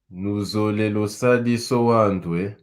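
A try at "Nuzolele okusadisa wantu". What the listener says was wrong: Très bien.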